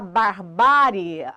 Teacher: a sílaba tônica de barbárie é ba, penúltima, acentuada por terminar em ditongo crescente IE.